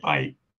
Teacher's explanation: It can occur at the end of a word like bike, but I'm putting a K on that, but if I say bike, with a glottal stop at the end. That's the usual realization of word final K. It can also occur in words like sa'at, which is second, and it can occur, this is a borrowed word, sa'at from Arabic, and it can occur in the middle of a word like di'angap, which is separating a prefix from the root.